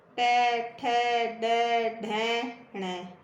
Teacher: जीभ का अगला हिस्सा जो है ना वो मूर्धा के टच हो रहा है।